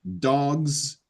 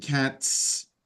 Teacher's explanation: even though acoustically it's not the same sound that you make one of them is voiced Z the other one is unvoiced s